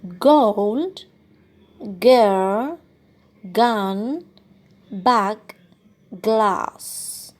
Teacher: this is a plosive sound, as there is obstruction on the airflow coming from the lungs, and then the air is abruptly released, producing a plosion or an explosion or a plosive sound. · it's velar, as the back of the tongue is in contact with the soft palate or velum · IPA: /g/